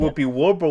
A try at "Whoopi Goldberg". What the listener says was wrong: He kept putting a W. for the G.